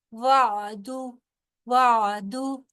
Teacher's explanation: آئن کی ساؤنڈ صرف نکلے گی، اس کے اوپر کسی قسم کی حرکت نہیں ہے